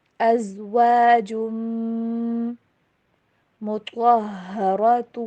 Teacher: بھی آ رہی ہے تو مزید لمبا کریں گے۔ فیہا ازواج، تنوین کی آواز کو میم کے ساتھ مکس کر کے پڑھیے